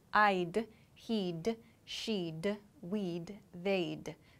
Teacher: example this d right here this d sound is the wood so we reduce the wood sound to d